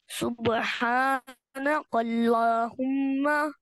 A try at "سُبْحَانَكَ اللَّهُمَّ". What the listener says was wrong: काफ को बारीक पढ़ो। सुबहानक अल्लाह, कल्लाह, काफ को बारीक पढ़े, देखिए आपने पढ़ लिया ना, कौफ, काफ।